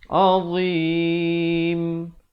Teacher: Makhrajnya itu hujung lidah itu mesti keluar macam huruf zal, cuma bunyinya tebal. Azim, dan diwaqafkan pada huruf mim, ditutupkan mulut dengan sempurna bagi menyempurnakan bunyi huruf mim